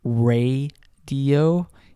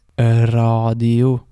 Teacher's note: the Norwegian R can be said continuously like this and the e sound that you hear initially is from starting this continuous R sound